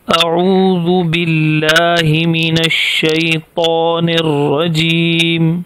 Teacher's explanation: آئین حلق سے اور الف بے تکلف بغیر حلق کے